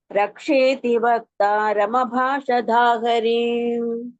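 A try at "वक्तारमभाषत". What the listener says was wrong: அபாஷதா தா கிடையாது தா. வக்தாரதா.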